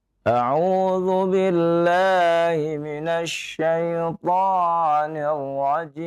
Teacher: Nah, dinaikkan sedikit nadanya ya, supaya lebih bersemangat ya.